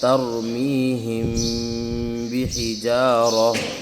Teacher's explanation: میم ساکن کے فوراً بعد اگر حرف با آ جاتا ہے تو میم ساکن کو جو ہے غنّے کے ساتھ پڑھیں گے، یعنی غنّہ کریں گے، ناک میں آواز چھپائیں گے۔ جس طریقے سے اخفاء میں غنّہ کرتے ہیں، ناک میں آواز چھپاتے ہیں، تو اسی طریقے سے یہاں بھی یہی قاعدہ لگ رہا ہے کہ میم ساکن کے بعد اگر حرف با آ جاتا ہے تو جو ہے میم ساکن کو غنّے کے ساتھ ادا کریں گے۔ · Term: اخفاء شفوی